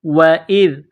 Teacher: ذال کو نرم کرنا ہے، زبان کا سرہ تھوڑا سا باہر نکالیں گے. ذال کو پڑھتے وقت حمزہ کو ذال کے ساتھ پلس کرنا ہے.